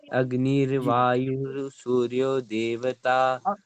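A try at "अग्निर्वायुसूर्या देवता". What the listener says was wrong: अग्नि, अग्नि र नहीं है यहाँ पे, अग्नि वायु सूर्या देवता।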